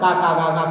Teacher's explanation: का वाली लाइन है, देखो कंठ से बोली जाती है